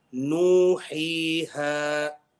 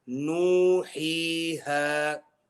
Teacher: So nuhiha is 6 haraka, you can't go any longer than that.